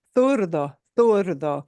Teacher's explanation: in some parts of Spain, you'll hear that pronounced with a Z, it'll sound like a TH.